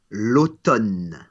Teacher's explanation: So there's no M sound in there at all.